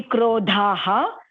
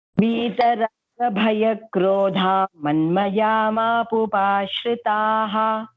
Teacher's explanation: if you're splitting it, then it will be krodhaha. If you're saying it together, then krodha manmaya immediately.